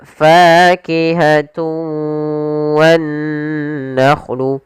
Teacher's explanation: idgham arti memasukkan dengan tidak sempurna ada yang kurang atau masih sedikit menyisakan suara nunnya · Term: Idgham naqis